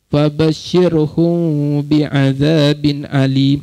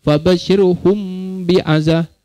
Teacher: kita sembunyikan mim pada mulut. Bukan mim betul, bukan sebut mim betul.